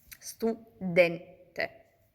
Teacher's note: l'accento tonico si trova su den